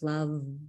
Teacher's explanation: A voiced labiodental fricative for love. That's the V in love. · the teeth in all tenderness sink slowly into the inner side of the lower lip and hold, while vibration moves